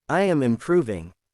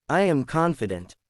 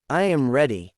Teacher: Drop your tone. That downward tone shows certainty.